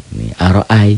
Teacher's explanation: Ini fathah dengan ya mati. Ini jadi huruf lin. Tidak jadi matobi'i, tidak jadi panjang. Kayak a dan i jadi diptong ai.